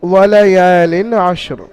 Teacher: এখানে রয়ের নিচে আশরিনের জায়গায় আপনি ওয়াক পড়ছেন, এখানে রয়ের উপরে থামছেন, রকে সাকিন করে পড়তে হবে।